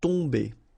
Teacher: Okay, so remember, you've got O-M here, but after that you've got a consonant, so it does mean that this combination of O-M will give you the sound on. Okay, you don't pronounce the M at all, so it's really a nasal, so it goes in your nose